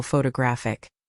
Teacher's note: photographic is stressed on the third syllable